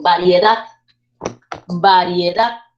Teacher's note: Yo digo variedad, variedad, subo la entonación y como cae en la última sílaba se convierte en palabra aguda